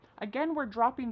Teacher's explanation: Whatcha is what plus you. You becomes cha.